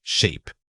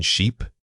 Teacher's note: For the E sound, truly stretch it out as you say it. It requires specific muscle movement in your cheeks and lips that is different from the short vowel.